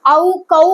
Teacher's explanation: அவு கவு அப்படின்னு சொல்லும் போது அதோட மாத்திரை அளவான 2 மாத்திரை அளவு கரெக்டா தருது